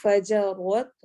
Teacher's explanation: را کو ہیوی کرنا ہے